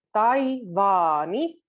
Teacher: it starts going front, tai, but then it goes back, vaani, and it goes back in the front for the ni